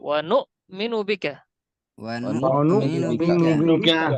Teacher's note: হামজার উচ্চারণ হঠাৎ করে থেমে যাবে।